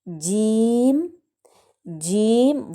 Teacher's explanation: وسط زبان اور وسط تالو، یعنی کہ زبان کا درمیانی حصہ اور بالکل اسی سے اوپر جو تالو کا درمیان ہے، جب یہ دونوں آپس میں ملتے ہیں تو جیم ادا ہوتا ہے